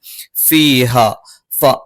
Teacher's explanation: മേലെ മുൻപല്ലിന്റെ താഴ്ഭാഗം താഴെ ചുണ്ടിന്റെ പള്ളയിലാണ്